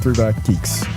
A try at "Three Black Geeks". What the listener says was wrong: Three Brack Geeks? No, you said Brack.